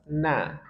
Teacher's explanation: Ujung lidah dengan gusi dua gigi seri atas. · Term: nun